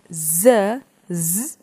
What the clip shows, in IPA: zzzzzzz